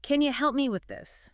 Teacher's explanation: And help me often links really tightly. It can almost sound like hell me, with the me sound being super short. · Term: help me link